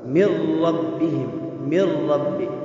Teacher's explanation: نون ساکن کے بعد حروف ادغام میں سے را آیا ہے تو یہاں ادغام بغیر غنہ کے ہوگا